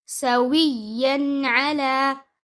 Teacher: It's again idhar. So you make the noon apparent, making the noon clear without bouncing it.